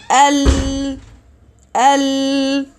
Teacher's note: The sound is continuous, and the sound of Lam is continuous while the sound deviates from both sides of the tongue. Okay, so there's no need to reopen the articulation point again as Al.